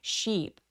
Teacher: 굉장히 길게 sheep 하면서 입술도 옆으로 쭉 찢어서 sheep. 이라고 연결해 주세요.